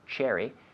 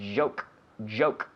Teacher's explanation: The pronunciation secret. It's the J, in this case, is a CH with the vocal cord activated. We take a CH like cherry ice cream, cherry, and we activate the vocal cord.